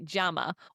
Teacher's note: the double L sound we now know sounds like a J.